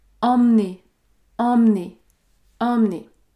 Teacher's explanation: vous notez que je ne prononce pas le E parce que il y a une seule consonne prononcée devant